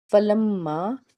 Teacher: میم مشدد ہے اور اس کے بعد چھوٹی مد ہے، 3 الف کے برابر اس کو ادا کریں گے۔